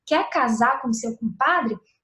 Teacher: Ele tira o R do infinitivo, né, do quer casar com o seu compadre, ele bota o U, porque é a maneira como a gente fala, né?